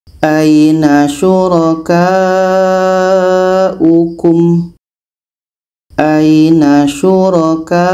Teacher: Ada tanda mad bertemu hamzah dalam satu kalimah. Ini mad wajib muttasil. Kita panjangkan 4 sehingga 5 harokat.